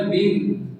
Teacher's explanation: میم کے اوپر تشدید ہے، اسے ہم 2 دفعہ پڑھنا ہوتا ہے